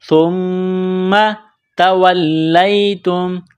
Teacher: میم مشدد ہے تو یہاں آواز ناک میں چھپائیں گے، غنہ کریں گے